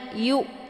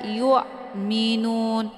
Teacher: jadi bacanya Yu tipis dan bunyinya jelas atau terang Bukan dibaca Yun Nah Ini kebanyakan yang kita perdapatkan cara membacanya